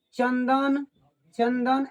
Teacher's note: चंदन द तो त वर्ग में है इसलिए बिंदु का उच्चारण न होता है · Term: अनुस्वार